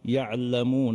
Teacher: الاتكاء على العين للنطق باللام وهذا ايضا معيب في القراءه